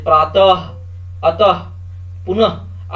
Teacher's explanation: विसर्ग इनका उच्चारण ह की तरह होता है